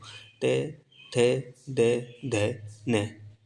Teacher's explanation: आपकी जो जीभ है वो ऊपर की जो दांत है ना अंदर की तरफ वहां पे टकराती है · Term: दंत्य